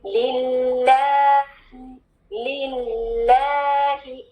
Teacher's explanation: ले वाली साउंड नहीं, ली वाली साउंड को आगे मिलाना है, दो लाम है, जमाओं के साथ अदा करना है।